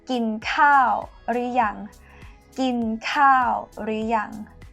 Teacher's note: กิน mid tone to eat. ข้าว falling tone rice. หรือ is high tone in conversation, but it actually comes from the word หรือ rising tone means or.